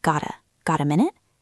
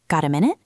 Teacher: I did not say got a minute. I connected the t in got to the a. It sounds like got a got a minute.